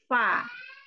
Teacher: Kalau fa bibir bawah bagian dalam bertemu dengan ujung gigi seri atas. Fa. Nah, pertemuan itulah yang menghasilkan hamas atau angin yang merupakan sifat sifat utama dari huruf fa.